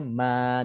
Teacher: nun tu yang ada pada tanwin kita gantikan dengan huruf mad, jadinya ma, daripada man menjadi ma, 2 harakat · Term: Mad Iwad